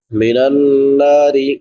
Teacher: نون مشدد پہ بھی غنہ ہوگا. من النار را باریک ہوگی کیونکہ را کے نیچے زیر ہے